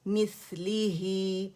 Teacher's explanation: سا کی آواز آنی چاہیے, ہمس رخاوہ